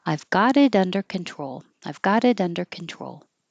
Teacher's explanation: we all connect the t's change to D's and then they'll connect to the following vowel